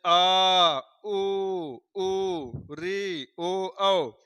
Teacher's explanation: जिह्वा के पिछले भाग से बोला जाएगा, जैसे आ, उ, री, ओ, औ, तो ये हो जाएंगे पच स्वर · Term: पश्च स्वर